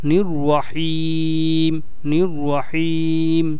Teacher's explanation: র এর উপরে তাসদি আছে জবর আছে রটাকে মোটা করে পড়তে হবে